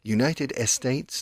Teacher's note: if you make a pause you instantly go to the Spanish style of estate